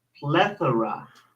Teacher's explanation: the first syllable is the stressed one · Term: stress syllable